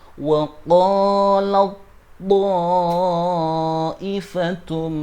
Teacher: cara baca taknya wajib dibaca idgham atau memasukkan huruf tak mati ke huruf ta, sehingga cara bacanya waqalat to, bukan waqalat to, tapi dimasukkan waqalat to.